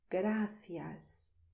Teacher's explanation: When you say thank you in Spanish, you say gracias. And I make a lisp because I come from Madrid